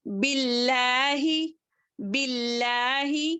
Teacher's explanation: اللہ کے لام میں جو ہے کسرہ آ گیا تو وہاں پر ہم باریک پڑھیں گے اس کو باریک پڑھیں گے.